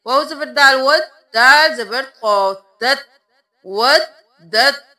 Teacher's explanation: آیت نمبر 69 میں دیکھ لیجئے، وَدَّتْ، وَدَّتْ نہیں کرنا، دال پر تشدید ہے، ود اور پھر دت، اب یہاں پر ہم ودت کو نہیں کریں گے، تا کو ہم نہیں پڑھیں گے، دال کو اس قو کے ساتھ ملائیں گے